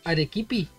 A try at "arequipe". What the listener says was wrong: Arequipe con eje, arequipe.